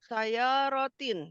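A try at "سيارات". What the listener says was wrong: Asyru sayyaratin. Sayyaratin, panjang ra-nya.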